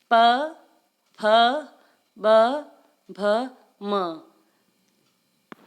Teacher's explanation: प वर्ग में ओष्ठ का प्रयोग यानी कि होठ का प्रयोग करते हुए इन वर्णों को बोला जाता है।